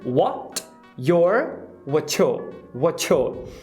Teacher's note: Primeiro, esse R é totalmente apagado, esse R caipira, então your, não vai ter esse e depois o yo vai virar ya. Então você tem uma redução da vogal para o schwa.